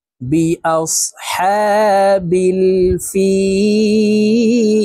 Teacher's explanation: তিন আলিফ টেনে লামকে সাকিন করতে হবে কারণ মদের হরফের বামের হরফে ওয়াকফা হইলে মধ্যে আরজি তিন আলিফ টানিয়া পড়িতে হয় তো আমরা এ শব্দটি এভাবে পড়বো দেখুন বি আসহাবিল ফিল সম্পূর্ণ